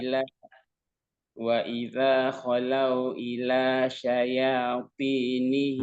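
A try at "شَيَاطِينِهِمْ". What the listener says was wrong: masih syayau berubah suaranya. Syayati. Nah, nggak berubah suara huruf ya-nya. Nah, syaya tetap tipis baru ti. Nah, sampai selesai suara ya itu baru kita mengucapkan huruf to, ya.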